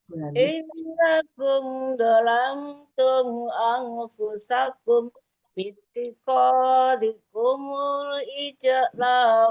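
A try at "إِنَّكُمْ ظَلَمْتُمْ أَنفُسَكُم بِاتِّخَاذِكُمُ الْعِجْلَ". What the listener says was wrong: Ketika anfusakum bitikho itu jangan sampai berhenti ya. Karena itu anfusakum ketemu dengan kum harus dipanjangkan bahkan ya. Innakum dalamtum anfusakum bittikum. Nggak boleh dalam anfusakum bitikho ya.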